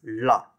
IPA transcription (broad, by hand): ɭɭ